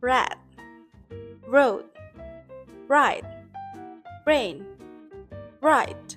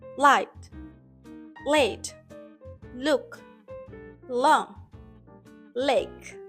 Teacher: For R, the air flows straight through the center. For a L, the air flows around the sides of the tongue. · For R, the tongue doesn't touch the roof of the mouth. For L, the tongue touches the alveolar ridge.